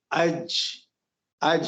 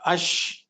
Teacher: زبان کا درمیانی حصہ اوپر تالو سے لگ رہا ہے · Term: چھٹا مخرج